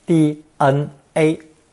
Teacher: The English letters are pronounced the way a Mandarin speaker would say them, that is, first tone